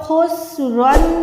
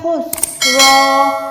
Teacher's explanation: دو زبر میں کیا ہوتا ہے جب بھی ہم اس پہ وقف کرتے ہیں تو ایک زبر ہو کے الف کے ساتھ ادا ہوتی ہے۔